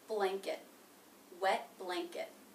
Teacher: And finally, the schwa T sound in the unstressed syllable, blanket, blanket. Notice I'm not releasing the T at the end of blanket. Again, I'm making it a stop T.